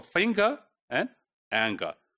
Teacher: Finger, there is engma, which is followed by g sound, right?